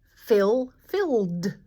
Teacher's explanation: We just say a d for the ED. We don't actually say that vowel.